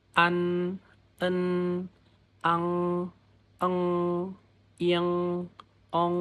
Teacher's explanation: Jadi, selain dari ee mulut, suara juga keluar lewat hidung, makanya disebut sengau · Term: final sengau